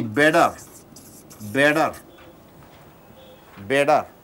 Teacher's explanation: T is changed into D.